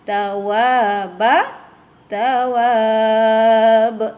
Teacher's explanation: Di sini ada mad arid disukun. Asalnya mad asli tapi berhenti, dia menjadi mad arid disukun dan ada qalqalah kubra.